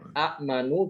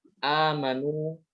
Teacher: Huruf hamzah itu diganti dengan huruf mad, yaitu alif. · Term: mad badal